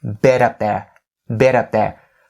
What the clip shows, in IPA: bɪ-tʌp